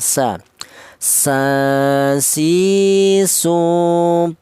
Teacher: Huruf sin ini keluarnya huruf berasal dari ujung lidah menyentuh pangkal gigi seri bagian bawah ya.